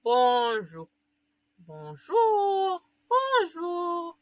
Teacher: Si ustedes escuchan una R, no es una R muy marcada, es una R que suena ya, que casi ni suena.